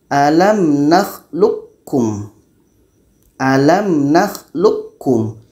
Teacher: Q ini masuk secara sempurna jadi bunyi Q ini memang tidak terdengar lagi kalau kita baca alamlum alamlum yang terdengar bunyi k bunyi ko · Alam nakhluqkum. Yang terdengar bunyi ka. Bunyi qa sudah tidak ada. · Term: idgham kamil